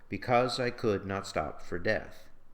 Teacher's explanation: The rhythm is even, as in the other examples, but the line is slowed by the quick recurrence of the stressed syllables